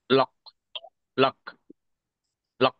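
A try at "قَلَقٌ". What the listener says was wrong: এই জি, আপনার পড়া ঠিক আছে।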